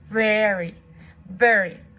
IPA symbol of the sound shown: v